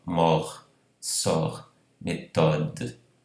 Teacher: Quando a sílaba termina com consoante, aqui termina na fala com consoante R, ela deve abrir a vogal.